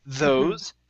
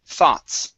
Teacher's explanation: Okay, so we have two different types of THs here. We have a voiced TH, those, and an unvoiced, thoughts.